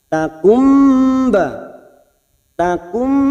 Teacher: Kita bunyikan dengan cara membalikkan nun sukun menjadi mim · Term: iqlab